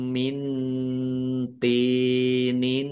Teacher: Nun sukun bertemu dengan huruf th bacaan ikhfa